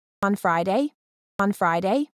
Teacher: the pitch goes up at the end she's asking